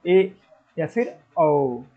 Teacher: आपका मुंह अर्ध यानी कि आधा खुलेगा और ये वृत्त की तरह खुलेगा। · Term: अर्धवृत्त